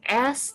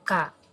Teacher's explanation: Nah, itu pada saat kita melafalkan huruf tersebut, pita suara dalam keadaan terbuka, sehingga dia tidak mengalami adanya getaran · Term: bunyi tidak bersuara